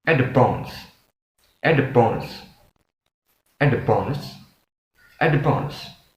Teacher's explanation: So the D sound is pronounced B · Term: assimilation